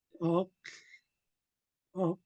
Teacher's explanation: the tip of our tongue will automatically dart up behind our upper front teeth for the talk, talk. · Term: HL blend